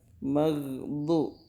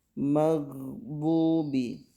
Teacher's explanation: Kalau dal itu berarti ujung lidah. Sementara bod itu sisi lidah.